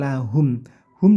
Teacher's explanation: Alif Anna nah na nanya pendek langsung lahum Hum di sini ada mim sukun bertemu Jim ini namanya izhar syafawi tidak boleh dibaca dengung tapi jelas singkat saja